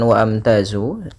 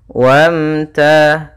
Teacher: Ini hamzah atau alifnya tidak dibaca. Ini tanda artinya dia tidak dibaca langsung ke huruf mim dimatikan.